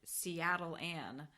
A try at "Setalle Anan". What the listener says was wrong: It sounded like you said Seattle on.